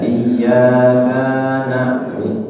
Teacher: Iyyaka, ka-nya pendek, maka tidak ditahan.